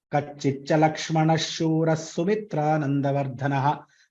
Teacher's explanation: So the first Visarga turns to Shakara, second Visarga turns to Sakara.